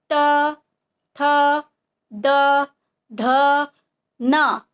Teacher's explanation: तो देखिए, आप लोग भी जब बोलिएगा त, थ, द, ध, न, आप लोग भी ट्राई करके देखिएगा कि आपका जो जीभ है वो दांत को स्पर्श करेगी, छुएगी जब भी आप बोलेंगे त, थ, द, ध, न। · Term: त वर्ग